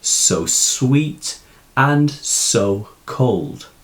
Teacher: sibilance being the repetition of the s sounds as in the snake hisses